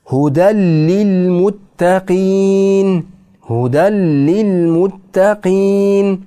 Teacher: Lam harfiga kirgizib o'qiymiz